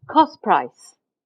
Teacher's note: When you say cost price at fast speech, what's happening is that you're losing the t and the p become blurred into p.